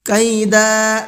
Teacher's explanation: دال کو کھینچ کر کے پڑھنا ہے تھوڑا سا، 1 الف کے برابر بس